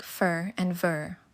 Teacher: Labiodental, the lower lip touches the upper teeth for sounds like fur and ver.